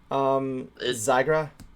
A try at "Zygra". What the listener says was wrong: Yeah, the way you said it, the way you just said it last time, you said ER.